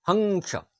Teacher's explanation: এটি কোন বর্ণের পরে এবং ছোট্ট বিন্দুর মত বসে এবং নাক থেকে উচ্চারণ হয়। যেমন হংস শব্দে হং এই অংশের উচ্চারণ নাক থেকে আসে। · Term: অনুস্বার